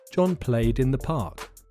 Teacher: Can you hear the d in front of the word in? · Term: voiced ending